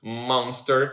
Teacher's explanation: the air is coming out of your mouth but part of it is also coming out or coming through your nose which makes the nasle sound here. Then if we keep going